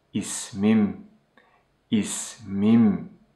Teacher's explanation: Here, the vowel omission rule comes into action. The last vowel of the original word is omitted, and it becomes ismim, ismim.